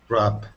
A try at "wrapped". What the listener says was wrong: Right, wrapped. So you do pronounce the D at the end. It's kind of hard to hear sometimes, but it's wrapped. Wrapped.